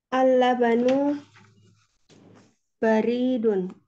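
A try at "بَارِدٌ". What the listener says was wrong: Baridun. Yang panjangnya Mbak.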